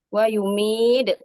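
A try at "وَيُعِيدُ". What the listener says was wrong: bukan mim ain. Wa yu'id.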